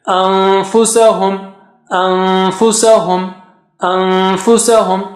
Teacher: So how do you say anfusahum? So fa, go close to the makhraj of fa and then take the sound from your nose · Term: ikhfa